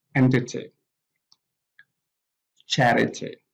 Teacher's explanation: We have the stress on the first syllable.